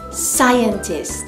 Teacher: The stress you have to put on the first syllable, sai. Okay, so we have here sai, cyan, and tis.